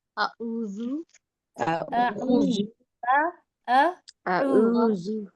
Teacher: او نہیں کریے، حلق سے نکالیے